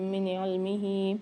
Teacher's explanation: من علمه میں نون ساکن کے بعد عین آ رہی ہے، اظہار ہلکی والا قاعدہ ہوگا، یہاں پر ہم اظہار کر کے پڑھیں گے، غنہ نہیں کریں گے۔